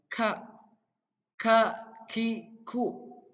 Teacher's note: Kaf itu dilafalkan harus ada angin-anginnya.